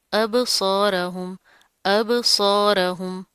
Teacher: صاد موٹا پڑا جائے گا، رو بھی موٹا پڑا جائے گا